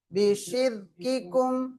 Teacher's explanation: இந்த ராவை வந்து வல்லினப்படுத்தாம சொல்லணும்